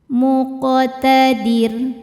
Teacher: Huruf qaf sukun dihukumi qalqalah sughra, sebab qafnya sukunnya tidak asli ya, bawaan dari kalimah muqtadir dan ada di tengah bacaan. Maka huruf qaf ini cara bacanya dipantulkan dengan pantulan yang kecil. Muqtadir. Saat berhenti di huruf ro-nya kan disukunkan, dibacanya tarqiq.